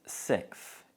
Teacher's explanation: So we usually pronounce it sixth. In accents where th fronting is common, the th sound may also be replaced with the f sound. So this may be pronounced sixth in London and the southeast of England.